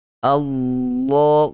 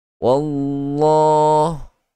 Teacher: Ada lekukan di bahagian tengah lidah untuk kita tebalkan bacaan huruf lam. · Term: huruf lam yang ditafkhimkan